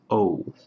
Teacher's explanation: It's not just O, it's O. It's an O and then a U put into a diphthong. In Japanese, it's just one straight pure vowel, O.